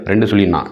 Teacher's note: நாவின் நுனி மேல்வாய் அண்ணத்தின் முன்பகுதியை தொடுவதால் பிறக்கும் எழுத்து